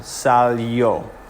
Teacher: would be on the a and you would say sal yo the i o making like a y o sound